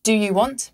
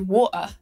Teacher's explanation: We also drop the T's a lot in British English.